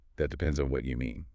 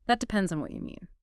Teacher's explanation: Try using a rising intonation at the end, almost like a question.